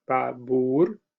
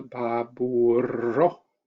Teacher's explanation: with a stronger, more energetic r in the plural